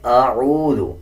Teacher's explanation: اس میں اس بات کا یہ خیال رکھنا ہے کہ حمزہ کی آواز الگ آئے گی اور عین کی آواز الگ آئے گی. اکثر لوگ اس کو اعوذ پڑھ دیتے ہیں.